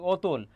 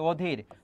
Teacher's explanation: অ এর উচ্চারণটা ও হয়ে যাচ্ছে